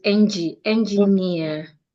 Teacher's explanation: Engineer ends in EER, so you're stressing near.